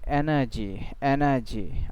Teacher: আর এর উচ্চারণ কিন্তু নেই